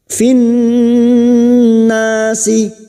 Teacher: Alif lam yang bertemu nun dalam takrif yang tidak bersukun ciri-cirinya idgham syamsiyah. Masuk pada huruf nun yang bertasdid dan mendengung selama 3 harokat.